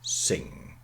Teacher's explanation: middle english sing and then somewhere on the way the go the plosive is elided assimilated merged whatever you like it's gone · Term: velar nasal